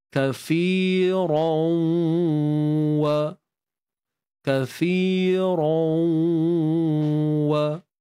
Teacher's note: masukkan tanwin ke dalam waw, hukumnya idgham bi gunnah.